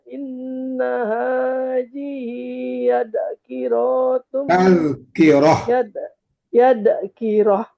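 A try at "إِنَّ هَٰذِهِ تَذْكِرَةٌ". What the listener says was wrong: Tak, itu bukan ya. Kalau ya titiknya di bawah, ini titik di atas. Inna hajihi tazkirah.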